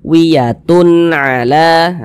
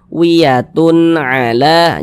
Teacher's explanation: Sehingganya cara membacanya dibaca jelas, kemudian tidak berdengung, tidak digunahkan. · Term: izhar halqi